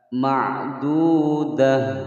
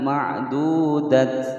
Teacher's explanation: Dah, perhatikan di sini ada ta marbuthah yang menyandang harokat fathatain di akhir kalimat, maka dia tidak dibaca panjang, disukunkan kemudian berbunyi ha. Ma'dudah bukan ma'dudat.